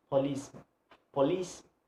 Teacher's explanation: the place of the stress is the second syllable of the first word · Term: word stress